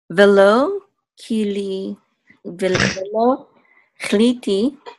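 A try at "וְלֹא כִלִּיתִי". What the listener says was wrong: Chiliti. No, I just didn't hear any vowel for the chaf. It sounded like you did a shva.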